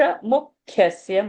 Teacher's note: mu will have a pressure. Kha is a mahaprana over there.